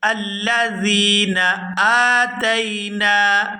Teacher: یہاں حمزہ کو کھڑی زبر کی وجہ سے کھینچ کر ادا کریں گے